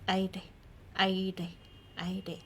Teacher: Here you only have to tap with your tongue, like the roof of your mouth, but very subtle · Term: more subtle pronunciation